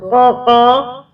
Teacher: اچھا، اور مخرج قاف کا جو ہے جب ہم قاف بولتے ہیں تو قا یہ بھی حلق سے زبان جہاں سے زبان کا اندرونی حصہ ہے وہاں سے ادا ہوگا